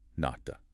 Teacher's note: In Korean, it stayed relatively crisp. Nata, that T sound at the end is strong.